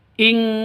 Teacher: Nun mati bertemu dengan kaf, samar didengungkan, siap-siap ke huruf kafnya. Nun matinya ditambah dengan ng. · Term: ikhfa hakiki